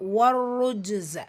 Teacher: ஷம்சியா ரா வந்து தொம்மாவில் இருக்குது, ஷத்தாலே இருக்குது, அழுத்தமும் கொடுக்கணும், ஹெவினஸும் கொடுக்கணும். ஜீம் சுக்கூன் கல்கலத்து சுகுரா இடையில் வந்துருக்கிறதுனால சிறிதாக சச்சு ஓதனால் போதுமானது.